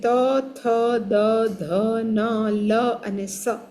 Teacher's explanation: ત, થ, દ, ધ, ન, લ અને સ એ દાંતને આપણે જીભ અડાડીને બોલવાનું